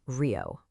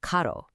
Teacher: This creates a rapid flap that English speakers often hear as a soft D sound. So we go from a deep, throat-clearing H to a light, frontal D.